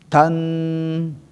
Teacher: Ingat nun bertasdid adalah ditahan.